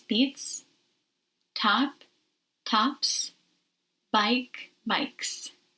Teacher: S is pronounced as S after voiceless sounds like t, p, k.